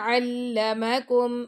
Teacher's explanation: عین جو ہے آپ کے گلے کے درمیان سے اس کی آواز آنی چاہیے